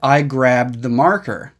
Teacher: we start to make the D sound but then we don't let it come out grab and we stop the D sound there then we continue